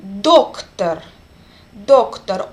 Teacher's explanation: O is under accent and another O is reduced.